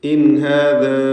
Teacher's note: ഹാദാ എന്നതിലെ അലിഫിൻ്റെ ദീർഘം മദ് മുൻഫസിൽ ജായിസാണ്. 4-5 ഹറക്കത്തിൻ്റെ അളവിൽ അലിഫിനെ ദീർഘിപ്പിക്കേണ്ടതാണ്. · സാക്കിനത്തായ നൂനും ശേഷം ഹാഉം ഇദ്ഹാർ ഹൽഖി നൽകി നൂനിനെ വെളിവാക്കണം, മണിക്കാതെ വെളിവാക്കി ഉച്ചരിക്കണം. ഹാദാ എന്നതിലെ അലിഫിൻ്റെ ദീർഘം മദ് മുൻഫസിൽ ജായിസാണ്.